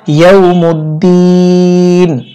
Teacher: অক্ফের সময় নুন সাকিন হবে এবং এখানে তিন আলিফ লম্বা করে পড়তে হবে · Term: মধ্যে আরদি